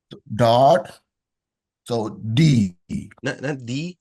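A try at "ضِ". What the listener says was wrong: Not D, but Lee. Remember to use the side of your tongue. Lee.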